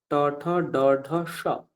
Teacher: মূর্ধন্য সকার মূর্ধ থেকে উচ্চারণ হয় তার জন্য ট ঠ ড ঢ স এরকম